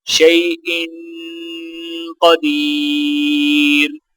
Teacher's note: حمزہ کے نیچے 2 زیر ہیں، غنہ کریں گے، دال کو یا کے ساتھ ملاتے ہوئے ایک الف کے برابر کھینچ کر پڑھا جائے گا۔